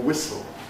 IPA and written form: ˈwɪsl̩ (whistle)